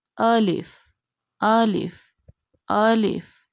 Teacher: Alif is read as a madda and it's pronounced from the empty space of mouth.